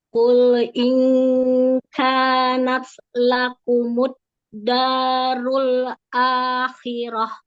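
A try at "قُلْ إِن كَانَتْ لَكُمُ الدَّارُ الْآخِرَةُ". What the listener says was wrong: Qaf, dhammah, monyongin lagi. U, monyong.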